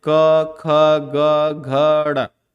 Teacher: क ख ग घ ड़, ये आते हैं, ये सब कंठ से बोले जाते हैं।